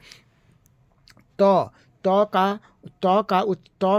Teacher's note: तौ का उच्चारण स्थान दंत है